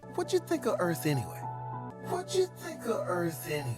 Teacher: He actually dropped the word do altogether. When you is preceded by a word ending in T, it usually morphs into a chew sound. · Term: connected speech